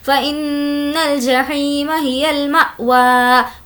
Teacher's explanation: حمزہ ساکنہ کے پڑھنے میں جھٹکا ہوتا ہے